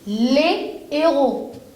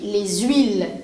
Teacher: le H aspiré, lui, ne fait pas de liaison.